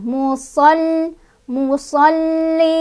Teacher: tekan lagi lamnya ada tasdidnya, musol musallin, ada mad arid li sukun karena ada matobi'i yang bertemu dengan huruf yang disukunkan.